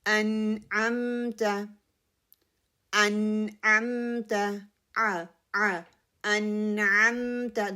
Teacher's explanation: اور نون کے لیے جو ہے میری زبان کی ٹپ ہے ان، اوپر والے جو سامنے والے دانت ہیں ان کی گمز کو لگنے سے ادا ہوتا ہے · ان نون کے اوپر کلکلا نہیں کرنا، ان اس کو پکڑنا ہے